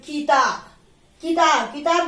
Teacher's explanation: ह्रस्व स्वर में कम टाइम लगता है, इसीलिए हम किताब, किताब, किताब जब उच्चारित करते हैं तो बहुत ज्यादा की पर हम जोर नहीं डालते हैं